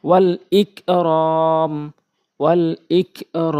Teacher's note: যেই জায়গাগুলোতে মদের হরকত আর মদের হরফের বামে ওয়াকফ করা হয়েছে সেই জায়গাগুলোতেই হচ্ছে মধ্যে আরজি, আমরা ৩ আলিফ টেনে ওয়াকফ করব।